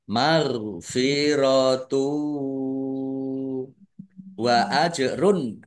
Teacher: jim sukun bacaan qalqalah dibaca memantul ditampakkan pantulannya · Dhammah tanwin bertemu dengan huruf wau, idgham bil gunnah masuk dengan mendengung, yaitu mendengung wau. Ditandai ada wawunya ada tasdidnya, ditahan biar tampak mendengungnya.